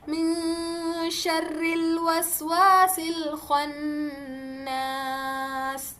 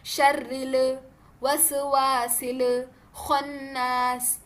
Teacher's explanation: इससे लह जली हो जाएगी। तो हमने लाम पे खलखला नहीं करना है ना ही हरकात लगाना है।